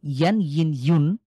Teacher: হরকতের উচ্চারণ যেভাবে করেছি সেইম থাকবে। শুধু শেষে একটা ন যুক্ত করব। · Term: তানভিনের উচ্চারণে